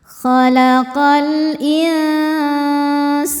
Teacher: insana sa hukumnya mad thobii zohiri karena ada alif didahului fathah maka sinnya panjang dua harakat · Kemudian ada hukum alif lam namanya alif lam qomariyah sebab alif lam menghadapi huruf qomariyah yaitu hamzah. Alif dengan harokat kasrah ini adalah hamzahnya. Maka lam dibaca jelas.